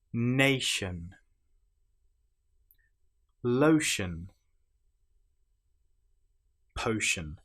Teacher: the ti here is pronounced exactly the same as the sh sound